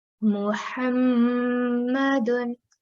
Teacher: I've stressed on mim and also prolonged for 2 seconds. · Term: mim mushaddad